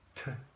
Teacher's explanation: You see, the paper moves. There's a breath of air that's called aspiration.